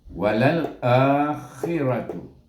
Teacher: ra baris atas ra baca dengan tebal ra